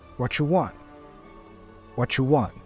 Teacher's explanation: sounds so what you white What U becomes what you and the T for want is a stop t